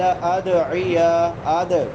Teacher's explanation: دال حروف قلقلہ میں سے ہے اس کو ہلا کے پڑھیں گے